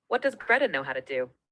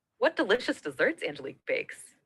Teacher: in wh exclamations the wh word is highly prominent it's marked with its own L plus h star